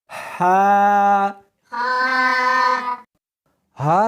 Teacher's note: اس کو حلق میں سے نکالنا ہے اور ساتھ میں ہوا بھی ہونی چاہیے. ہا نہیں پڑھنی بلکہ اس کو حلق میں سے نکالنا ہے، سینے میں سے نہیں نکالنا.